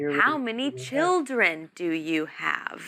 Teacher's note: because it's a wh question with how we normally end it in a falling pitch not Rising